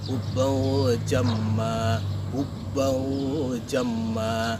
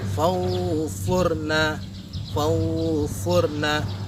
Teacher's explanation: Jadi tidak condong ke NG, tidak condong juga ke N. Jadi berada di tengah-tengahnya.